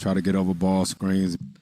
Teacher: i think it's a pretty clear stress on ball